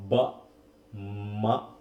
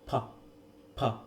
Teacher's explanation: দুটা ঠোঁট একসাথে মিলে আমি উচ্চারণ করছি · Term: বাইলেবিয়াল